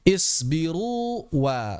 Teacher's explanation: Waw yang pertama Ini mad, keluarnya dari jauf, huruf vokal, dia huruf vokal. Waw yang kedua keluar dari syafatan, dia konsonan.